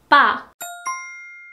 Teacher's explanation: when you pronounce pa, that has a tense consonant at first, your paper wouldn't really move, or your candle wouldn't flicker.